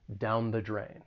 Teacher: the article is going to be pronounced with that schwa sound, the. It's that weaker sound, down the drain.